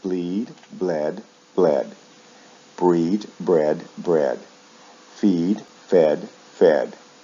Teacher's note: verbs like feed shift vowel sounds in the past and the past participle usually from long e to short ah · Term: long E to short E